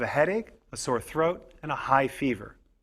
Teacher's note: we put stress on each item in the list and pause a little between each item